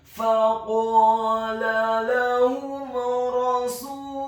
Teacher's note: Apabila ada huruf mim yang sukun bertemu dengan semua huruf hijaiyah kecuali huruf mim dan ba, dalam hal ini adalah huruf ra yang fathah, maka hukum bacaannya adalah dibaca dengan jelas izhar syafawi · kata Rasulullahi, huruf ra-nya dibaca tafkhim tebal fathah 1 harokat